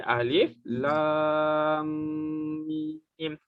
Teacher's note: Antara mim dengan mim ni, maksudnya lam nak masuk mim tu, kita kena dengungkan ataupun kita kena panjangkan bunyi mim tu, kena tahan bunyi dia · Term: idgham mislaini